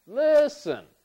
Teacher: once again the stress is on the first syllable for listen